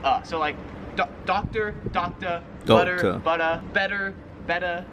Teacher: Like any word that ends in like an IR, ER, AR, in Australia, just kind of how the accent is, they just say So like doctor, butter, better. The R is not really pronounced.